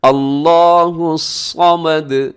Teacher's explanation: سب کے آخر میں جو دال ہے اس کی آواز کو اپنے ڈبل کرنا ہے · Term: قلقلہ